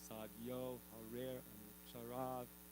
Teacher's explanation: And then another thing to know that makes it easier is the O and the E are also twice as long as the shorter vowels. So it's sadyo, harer, anucharav, like that.